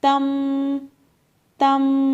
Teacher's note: اب دیکھیں یہاں پہ تا نون زبر تن پڑھنا تھا، ٹھیک ہے، لیکن نون سے اگلا والا جو حرف ہے وہ با ہے، جس کی وجہ سے یہ نون کی جو آواز ہے یہ میم سے بدل جائے گی · نون کی آواز کو میم سے بدل کر غنہ کر کے پڑھیں گے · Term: اقلاب